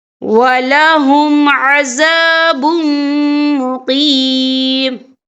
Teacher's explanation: تو یہاں پر ادغام ہوگا، تو ہم اسے غنّے کے ساتھ پڑھیں گے.